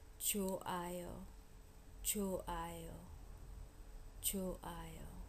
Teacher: If it's followed by a vowel, h almost disappears.